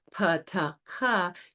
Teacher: So when you produce the pa, ta, ka, you have that aspiration airflow, which is actually more difficult than the voiced cognate